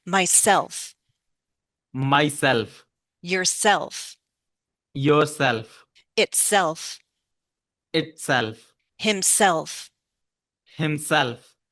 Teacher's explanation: So we're going to put stress on self.